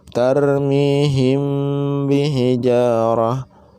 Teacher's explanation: hukum mim mati bertemu dengan huruf ba dibacanya dengan suara samar tarmihim bihijaratim bukan dengan dengung tapi suaranya dengan suara samar-samar itu · Cara membaca ikhfa safawi yaitu dengan suara yang samar antara mim dan ba pada bibir. Jadi suaranya samar antara mim dan ba pada bibir kita. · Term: Ikhfa Syafawi